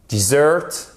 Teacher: Et attention, c'est pas dessert, parce que dessert, avec l'accentuation sur la première syllabe, dessert, c'est le désert. Dessert, accentuation sur la seconde syllabe et en plus, ici le E, il se prononce comme un E.